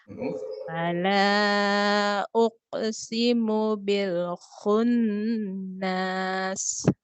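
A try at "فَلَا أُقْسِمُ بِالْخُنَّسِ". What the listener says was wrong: Enggak panjang, tidak ada mat. Khunnas. Enggak, jangan nas, enggak panjang, dia tidak ada panjang. tidak ada mat.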